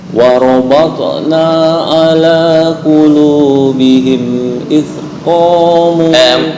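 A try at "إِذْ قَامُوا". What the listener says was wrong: Masih tercampur dengan sin dan za. Mana id itu? Zal itu ujung lidah dengan gigi atas, gigi sari atas.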